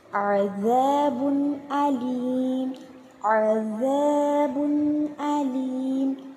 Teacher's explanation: தன்வீனுக்கு அப்புறம் அலீஃப் ஹம்ஸா இருக்குது. ஸோ நம்ம தெளிவாக ஓதணும். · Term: இல்ஹர்